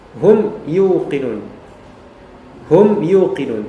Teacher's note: mim dibaca mati dengan jelas izhar syafawi yaitu izhar dari segi syafah bibir